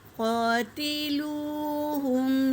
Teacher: واو ساکن سے پہلے پیش واو مدہ، اس سے بھی ایک الف کے مقدار کھینچیں گے۔ · قاف میں الف سے پہلے زبر الف مدہ ہے، ایک الف کے مقدار کھینچیں گے۔